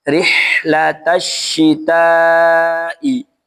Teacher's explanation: Huruf ha di sini dibaca rokowa mengalir ya. Rihla bukan rihlata ya.